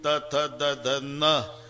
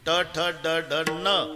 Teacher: बाणाचा न, नळ्याचा न, उच्चार तर सारखेच आहे ना, पण भानगड काय आहे. नळ्याचा न उच्चारा तर जीभ दाताला स्पर्श करणार, बाणाचा न उच्चारा अजिबात दाताला लागत नाही, टाळूला. इतकं जवळजवळच आहे ते, करून पहा तुम्ही.